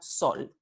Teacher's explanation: la realización del alófono fiel, predorso alveolar S